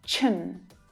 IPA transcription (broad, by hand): tʃən